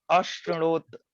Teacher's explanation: श में, तालव्य श में री है, तो तालव्य श का उच्चारण तालु से होगा। मतलब जिह्वा ऊपर वाले दांत के आगे भाग, अगले वाले भाग में जाएगी।